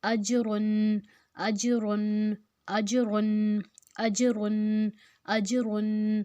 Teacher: اب اس میں جیم جو ہے نا وہ حروف قلقلہ ہے، اس کو ہم نے ہلا کر پڑھنا ہے